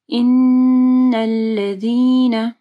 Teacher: نون مشدد ہے، یہاں پہ کامل غنہ ہوگا. ان الذین، ذال کے مخرج کا خیال رکھنا ہے.